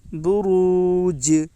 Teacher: واو ساکن سے پہلے پیش ہے، اس لیے واو مدہ ہوگا۔ واو مدہ کو ایک الف کے برابر کھینچ کر پڑھیں۔ جیم کے اوپر جزم ہے، جزم والے حرف کو پیچھے والے حرف سے ملا کر پڑھیں۔